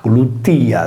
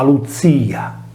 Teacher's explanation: la consonante sorda iniziale che precedeva una liquida, in questo caso la /c/ che anticipa la /l/, non veniva pronunciata